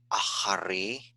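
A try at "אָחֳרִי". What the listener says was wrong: Achori, there's an O on there. Achori.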